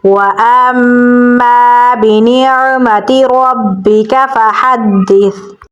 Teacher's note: काफ को बारीक पढ़ेंगे। हा को गले के दरमियान वाले हिस्से से निकालेंगे और दाल के साथ मिलाएंगे क्योंकि दाल के ऊपर तशदीद है।